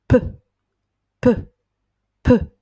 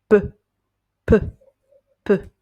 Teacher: Donc, vous allez prendre une inspiration en ayant les lèvres fermées et vous expirez, donc vous sortez l'air de votre bouche en prononçant un P rapide. C'est un petit souffle d'air rapide, bref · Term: le son P